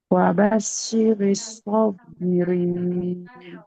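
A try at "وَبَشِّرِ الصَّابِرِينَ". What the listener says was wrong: Wabashiri huruf shin, jangan wabasiri. Wabashiri sobirin.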